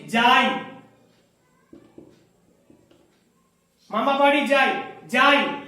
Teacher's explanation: আ পূর্ণ স্বর, ই হর্ষ ইটা পূর্ণভাবে উচ্চারণ হচ্ছে না। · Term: অর্ধস্বর